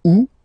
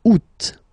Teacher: so it's July and then here two options because uh well two options are acceptable in French the first one you don't pronounce the final T u second one you pronounce it oot all right so remember · The first one, you don't pronounce the final T. Ou. Second one, you pronounce it.